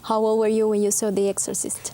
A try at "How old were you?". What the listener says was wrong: Siempre estás diciendo how old were you. Y la D la suprimes por completo. How old were you? How old were? How old were you? How old were you? How old were you? La D de old se enlaza con la W-E-R de were.